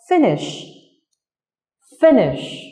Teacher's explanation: Trong từ finish giống như từ follow, âm tiết ở đây, âm tiết đầu tiên là âm tiết nhận trọng âm.